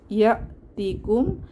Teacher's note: যে হামজায়ের উপরে সাকিন এসেছে, তাহলে একটু ধাক্কা দিয়ে পড়তে হবে। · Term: হামজায়ে সিফাতে শাদিদা